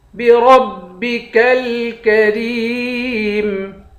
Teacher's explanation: را کو موٹا پڑھیں گے، اس کاف کو بھی باریک پڑھیں گے اور اس والی کاف کو بھی باریک پڑھیں گے۔